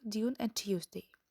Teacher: The use of the affricate G and Ch instead of the clusters in word like Dune and Tuesday. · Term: Yod coalescence